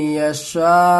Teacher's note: इस मद में 3 अलिफ के बराबर खींच करके पढ़ना है। यशा, इसका हिज्जे कर लेते हैं, यानी अलग करके पढ़ते हैं।